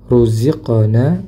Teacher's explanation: huruf qaf ketika sukun maka dipantulkan